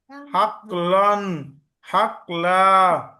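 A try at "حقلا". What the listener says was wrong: হাকলা, এখানে এই যে কলকলা ভাব চলে আসছে, কলকলা হবে হাকলা।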